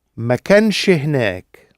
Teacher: Notice also we've got a little helping vowel because we've got ma kanch, n, sh, and then we've got hinek. So we've got n, sh, h, which results in a little helping vowel in the middle.